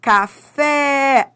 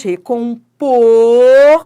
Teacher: Nem toda sílaba tônica tem timbre aberto. Ó, café é timbre aberto, mas recompor, ó como o timbre é fechado